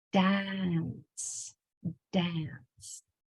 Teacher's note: when A is followed by an N, it alters the sound of the A, the short A.